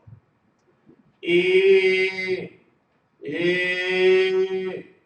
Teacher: for E, the tongue is high toward the front of the mouth, and the sound should rise from the back to the front of the mouth, like so. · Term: the vowel E